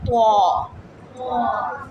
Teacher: زبان کی نوک جب سامنے والے 2 دانتوں کی جڑ سے لگے گی تو ادا ہوگا تو. موٹا حرف ہے اور ناک میں لے کے آواز نہیں جانی.